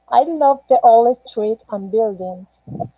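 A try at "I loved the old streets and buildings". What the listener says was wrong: All right, this last sentence, I love, you have to pronounce the ET like the ED as a T, okay? So we can know that you are speaking in past. So you have to say, I loved the old street and buildings, okay? No, I love because present.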